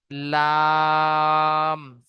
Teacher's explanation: 8 নম্বর মাখরাজ জীবের আগার কিনারা এবং সামনের উপরের দুই পাশের দাঁতের গোড়ার সাথে লাগিয়ে উচ্চারিত হয় লাম